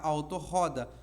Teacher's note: mantendo o som do r no fundo da garganta